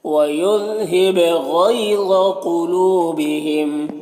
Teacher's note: لو میں واو مدہ ہے، ایک الف کے برابر کھینچ کر پڑھیں گے · غین حروف مستعلیہ میں سے پر پڑھنا ہے · قاف بھی حروف مستعلیہ میں سے ہے، قاف کو بھی پر پڑھنا ہے